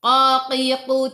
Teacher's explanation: pangkal lidah menyentuh lelangit, lembut, dekat dengan anak, tekak